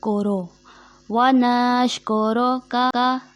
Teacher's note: व नशकुरुका, यहाँ जो गलती होती है उसको नून को शीन के साथ खींच कर मिला दिया जाता है, जैसे वनश, और काफ पे पेश, रॉ पे पेश, जिसको मजहूल पढ़ दिया जाता है